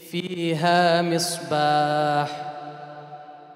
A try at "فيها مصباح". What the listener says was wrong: فيها مصباح. أريد حاء. لأن الحاء هذه يعني من أكثر الحروف التي يمتاز بها العرب. يعني يجب أن يأتي بحرف الحاء. فيها مصباح. فيها مصباح. يعني يجب أن تكون واضحة. مصباح. مصباح. حتى يعني يظهر مخرج الحرف الحاء.